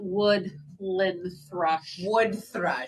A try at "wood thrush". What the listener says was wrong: Wood thrush, Wood thrush. Yeah, and too many syllables.